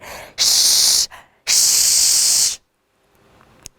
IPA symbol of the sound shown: ʃ